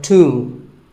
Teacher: the B is silent and the O is pronounced with an oo sound. So tomb.